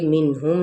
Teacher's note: نون پہ اظہار، میم پہ اظہار شفوی